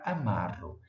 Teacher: esse grupo UE desaparece, ou seja, ele deixa de ser pronunciado. Ele é um grupo átono, ou seja, tem uma entonação mais fraca e, com isso, a tendência é desaparecer da língua.